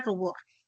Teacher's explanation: La U es alta y es posterior.